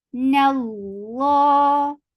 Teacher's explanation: noon is light, but lafz jalala will be heavy because there is fatha before it